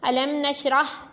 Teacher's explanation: میم ساکن کے بعد نون ہے تو غنہ نہیں کیا۔ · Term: اظہار شفوی